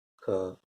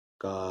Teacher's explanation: वैसे ही की मात्रा भी है, तो जब में छोटा मुंह खोलना पड़ता है, आ में बड़ा मुंह खोलना पड़ता है